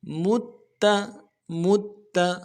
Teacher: میم کے بعد جو تا ہے اس کے اوپر تشدید ہے، تشدید پہ زور دیں گے۔